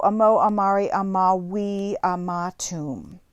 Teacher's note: the romans pronounced vs like w's